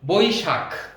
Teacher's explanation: স্বভাবতই দ্রুত উচ্চারণ করতে গেলে আমাদের বৈশাখ ক চলে আসে, কিন্তু এখানে আসলে বৈশাখ বানানে খ, খ হলো মহাপ্রাণ, খটাকে ধাক্কা দিয়ে বলতে হবে